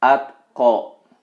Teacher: Jadi seolah-olah menyebutkan ateh. Tetapi sangat kecil sekali. Pantulannya sangat kecil sekali yang bisa terdengar oleh diri sendiri.